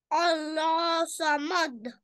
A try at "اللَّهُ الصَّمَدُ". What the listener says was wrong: नहीं आप हा दम्मा हू को भूल रहे हो. अल्लाह समद नहीं है ये. हा दम्मा हू को भी तो पढ़े ना.